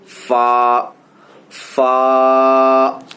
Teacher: اوپر کے دانتوں کے کنارے اور نچلے ہونٹ کے تر حصے سے ادا ہوتا ہے. اوپر کے دانتوں کے کنارے مطلب یہ حصہ, یہ جو تر حصہ ہے نا, گیلا والا حصہ.